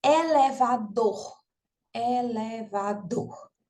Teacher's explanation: a sílaba tônica, a sílaba pronunciada com mais força é a última, né? O dor, elevador.